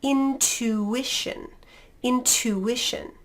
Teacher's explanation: the t is going to be a proper t in front of that u sound